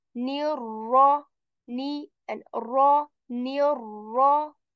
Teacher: I'm joining the noon with ra because of tashdeed, and also I'm keeping ra letter heavy because ra has a tashdeed and a fatha on it.